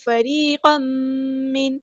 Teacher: یا مد آئیے 2 کاؤنٹ لمبا کریں گے ، فریقا من، تنوین کے بعد میم آئے ادغام مع الغنہ · تنوین کے بعد میم آئے ادغام مع الغنہ ہو رہا ہے